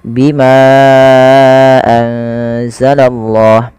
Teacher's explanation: untuk majaiz munfasil sendiri panjangnya dalam empat harakat atau lima harakat